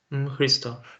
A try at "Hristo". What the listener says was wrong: Now, you can't have a break. HRISTO. HRISTO. You got to connect it. You can't have any space between the sound.